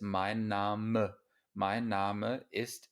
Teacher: una E al final de una palabra en alemán siempre se pronuncia, no como en inglés.